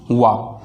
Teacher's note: तो वा के प्रयोग के लिए आपको दंतौष्ठ शब्द लिखना होता है। दांत और ओंठ दोनों के प्रयोग के द्वारा हम वा का उच्चारण कर पाते हैं।